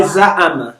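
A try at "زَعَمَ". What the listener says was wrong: no, we don't say ain. Ain is the name, but it's pronounced as a. Za'ama.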